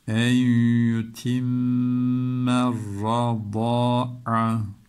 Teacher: Y harfi, dudağımız hemen ileriye gidiyor. Ötre olduğu için. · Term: idgam mergul